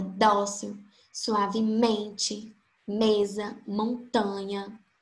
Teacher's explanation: a penúltima sílaba foi a mais forte, foi a sílaba tônica